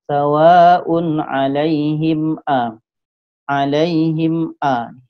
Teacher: Jadi mim mati jumpa hamzah, hukumnya izhar syafawi, dibaca jelas, dibaca tak dengung ya.